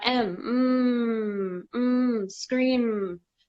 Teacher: scream mmm so you feel there that mmm mmm mmm scream so that is a voiced sound you feel the vibration